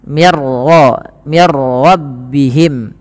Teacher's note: ini tidak boleh ditahan bunyi mir karena dia bila gunnah tanpa disertai dengan gunnah. Idgham bila gunnah juga dikenal dengan namanya idgham kamil, yaitu idghamnya secara utuh, memasukkannya secara utuh, tidak meninggalkan bunyi huruf nun lagi.